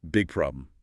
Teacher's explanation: The G in big is held unreleased before you release the P in problem. There's a tiny tension >> problem.